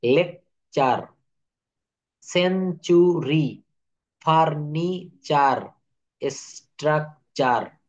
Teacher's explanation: শব্দের শেষে না, শুধু শব্দের টি থাকলে এবং টি এর পরে ইউ থাকলে, শব্দের ভিতরে যদি কোথাও টি থাকে এবং টি এর পরে ইউ থাকে, তাহলে এর উচ্চারণ, টি এর উচ্চারণ চ এর মতো হয়ে যায়।